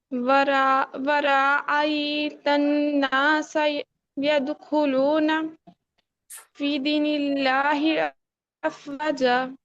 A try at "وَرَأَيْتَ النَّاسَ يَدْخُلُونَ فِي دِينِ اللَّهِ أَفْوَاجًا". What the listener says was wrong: وہاں کو لمبا نہیں کرنا. ورأیت، ٹھیک ہے؟